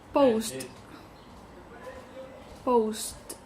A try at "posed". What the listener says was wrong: Posed. Because if it's post, It's posed. You're saying post.